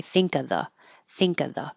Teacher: you can just skip the V and say think of the